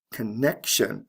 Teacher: ivity see how the stress has shifted there connection again the stress is right before the tion ending